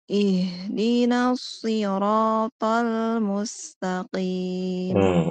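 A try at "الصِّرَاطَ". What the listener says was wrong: Ibu tidak ada kesalahan yang fatal atau kesalahan yang bagaimana, hanya saja huruf short tadi sudah bagus Ibu ya. Yang kurang itu huruf to-nya. To-nya itu kurang tebal. Tol. To. Coba Ibu ikuti saya. To. Pangkal lidah naik.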